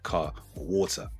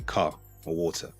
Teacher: I drop the final r when saying words like car or water. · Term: dropping of the final r